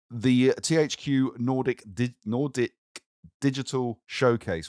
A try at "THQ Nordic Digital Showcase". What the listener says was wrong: Nordic. Just an odd stress of syllables.